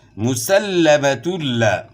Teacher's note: دو پیش کی تنوین کے بعد حروف یرملون میں سے لام ہے، تو ادغام بلا غنہ ہوگا، یعنی غنہ کے بغیر ادغام ہوگا